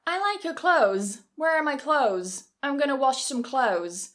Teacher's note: It may be easier to cut the th and just say close